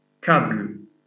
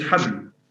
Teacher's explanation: English doesn't have a ha sound, so they replaced ha by ka.